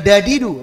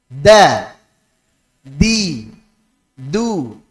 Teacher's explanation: ujung lidah menempel di Pangkal gigi di atas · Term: Dal Arabiyah